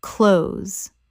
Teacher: The th is almost completely silent in natural speech. It rhymes with those.